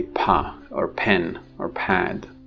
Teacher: in english we say the plosive is aspirated